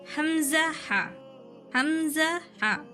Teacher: दूसरा मखरज है हलकी, हलक के आखिरी हिस्से से जो सीने की तरफ है, ये आखिरी हिस्सा है।